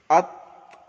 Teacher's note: তায়ের কলকলা হবে না। তো আপনাকে তা কি করতে হবে, জিভটাকে একটু ধীরে ছাড়তে হবে, আত। আর কি হবে, তয়ের যখন মাখরাজ হবে আত, আত, কলকলা হবে।